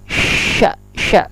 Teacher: termasuk huruf tafashi, yaitu membunyikan huruf dengan angin yang bertebaran